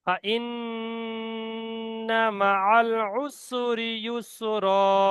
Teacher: ফাইন্না নুন তাসদীদ আছে, গুন্না ওয়াজিব। ফাইন্না মাআল উসরি ইউসরা, এখানে শেষে দু জবর আছে, এক আলিফ এক জবর টেনে পড়তে হবে।